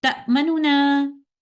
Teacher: stealing a part of dhamma of the first noon and reciting 2/3 of it with idhar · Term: Ikhtilas